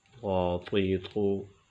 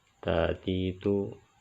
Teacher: طا کو موٹا کر کے پڑھتے ہیں اور تا کو باریک پڑھتے ہیں